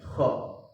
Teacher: kalau yang ada titiknya itu dia di ujung tenggorokan, itu huruf kho.